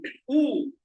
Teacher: Ooh is a rounded vowel because I'm rounding my lips.